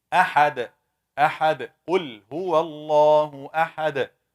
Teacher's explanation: This ending dal should be shaken. Why? Because it's one of the 5 letters جد with sukoon. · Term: qalqala